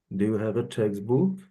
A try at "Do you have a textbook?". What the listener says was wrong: See if you can bring it a little lower. Textbook. Kind of play with it like you're singing. Textbook.